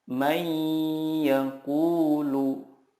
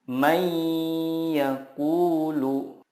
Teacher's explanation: Cara membacanya adalah meleburkan nun sukun ke huruf berikutnya dan disertai gunnah yang dipanjangkan 2-3 harokat. Contohnya, nun sukun bertemu ya, may yaqulu.